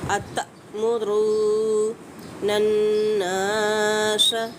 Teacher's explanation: نون مشدد ہے، غنہ واجب ہوگا۔ نن نا پہ الف مدہ، 1 سے 2 حرکات کھینچ کے پڑھے گا۔ · تا پہ جھٹکا دیں گے کیونکہ حمزہ ساکن آ گئی ہے